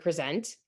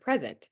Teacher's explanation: in present, the stress is in the front, but in present, the stress is on the end